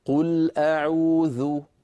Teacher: فننطق الحرف ونتبعه بضمة هي واو قصيرة. لما أقول مثلا قل أعوذ، انظروا إلى الشفتين، قل أعوذ، صوت لو طولته لو مططته فسوف يتولد منه واو.